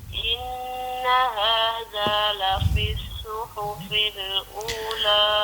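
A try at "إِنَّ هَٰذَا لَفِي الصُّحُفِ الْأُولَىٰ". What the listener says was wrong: Tebal sikit huruf sad.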